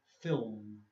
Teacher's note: The L is almost not there.